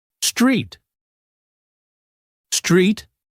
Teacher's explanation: notice the st and r sounds are blended together smoothly